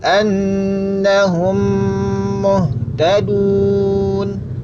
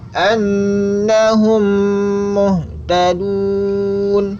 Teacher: hum kita ucapkan dengan ditahan gunnah, dan gunnahnya sempurna dengan merapatkan bibir atas dan bawah secara mantap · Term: idgham mimi